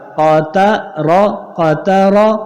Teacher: قاف زبر قا تا زبر تا قتا را زبر را قطر. قاف بھی موٹا را بھی موٹا تا باریک